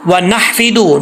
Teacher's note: नून के बाद हा है बरीक, इस हा का ताल्लुक हल्क से है